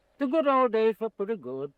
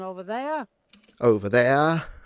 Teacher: Notice that his accent is non-rhotic. He does not pronounce his R's when they are at the end of a word. So they're like turned into a schwa, or when they are preceding a consonant.